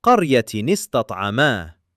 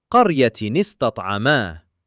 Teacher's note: qaryatin ista'ama Qaryatin ends in tanween kasratain giving that noon sound which is sakin. Ista'ama begins with a hamzatul wasl which drops away in continuous recitation exposing a sakin seen right underneath it. Sakin noon meeting sakin seen not allowed. · That little noon sound becomes ni, just enough of a vowel to separate the two sakins and let the recitation continue smoothly.